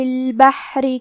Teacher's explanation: کلمت البحر میں حا ساکن ہے تو ہم حا کو ظاہر کریں گے، آخری میں حرف الرا کو پتلی آواز میں پڑھیں گے